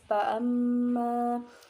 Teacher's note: Pada ayat ke-9 yaitu pada lafaz fa'amma itu dibaca gunah sebab mim bertanda tasydid dan cara bacanya yaitu dengung